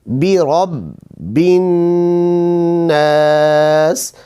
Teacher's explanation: ٹھیک ہے، یہاں پہ با بھی مشدد ہے، نون بھی مشدد ہے. را کو با کے ساتھ ملائیں گے اور با زیر کو پھر نون کے ساتھ ملائیں گے اور نون پہ غنہ ہوگا